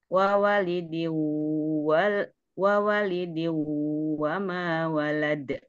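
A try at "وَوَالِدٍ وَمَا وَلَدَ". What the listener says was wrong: Wa-nya panjang. Wa walidiu.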